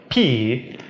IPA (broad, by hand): p